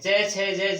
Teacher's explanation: च छ ज झ ये, इनका उच्चारण तालु से होता है तो इनको तालव्य बोलते हैं